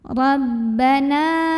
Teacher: tekanan di bibir, jangan sampai ada suara masuk hidungnya. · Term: ba tasydid